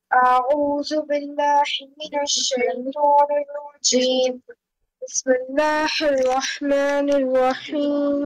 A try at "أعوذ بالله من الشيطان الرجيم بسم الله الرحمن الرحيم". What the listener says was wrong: You are making the ha of Allah sharper. Don't do that again.